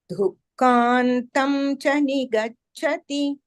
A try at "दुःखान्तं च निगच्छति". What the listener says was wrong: The kha is mahaprana. Dhukkantam cha nigacchati.